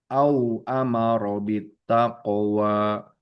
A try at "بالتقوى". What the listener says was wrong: taqwa. Lebih cepat pantulannya taqwa.